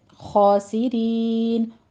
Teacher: یا مدہ کی آواز آپ کی ناک میں نہیں جانی چاہیے